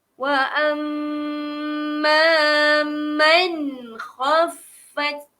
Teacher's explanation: apabila nun mati berjumpa dengan huruf kha, maka dia akan jadi di situ izhar.